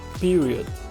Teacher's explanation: Nós temos ao menos um schwa sound na letra O